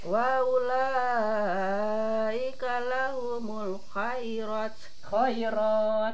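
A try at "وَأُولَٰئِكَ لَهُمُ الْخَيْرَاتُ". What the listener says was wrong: panjangkeun mad arid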